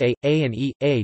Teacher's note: However, pairs A, A and E, A differ both in closedness and length.